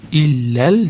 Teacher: Illal tashdid beramiz. Ya'ni lamga ulaymiz